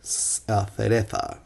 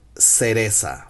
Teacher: the Z sound in Spanish from Latin American sounds also like the S sound. In Spanish from Spain sounds kind of different.